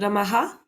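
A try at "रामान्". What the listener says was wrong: Ra, ma. It's a long a, and it's not a ha.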